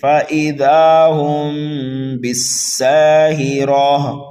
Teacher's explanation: سین کو سیٹی کی آواز دینا ہے، را کو پر پڑھنا ہے، گلتا کو ہا سے بدل دینا ہے، یہاں پر وقف بالابدال ہو رہا ہے۔ · میم ساکن کے بعد میں اگر حرف با آ جائے تو وہاں پر اخفاء شفوی ہوتا ہے